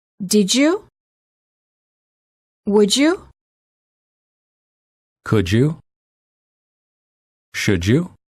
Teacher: D plus Y is usually pronounced as j, as in joke.